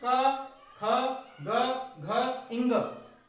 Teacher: कंठ से निकलने वाले में आते हैं ये निकलते हैं कंठ से